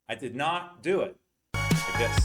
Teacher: So did is reduced and we expand not.